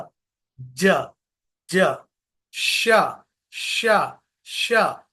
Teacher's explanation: हम यूज कर रहे मिडल ऑफ द टंग जबान का बीच का हिस्सा ऊपर की तरफ उट के आवाज निकलती ज ज ज श